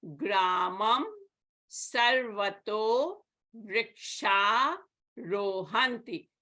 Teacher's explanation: But in this case, the Visarga is preceded by a long A, vrikshaha. So this Visarga will be deleted, and Ra is a soft consonant.